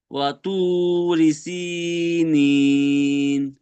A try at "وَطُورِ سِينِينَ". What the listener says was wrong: মাশাআল্লাহ মাশাআল্লাহ,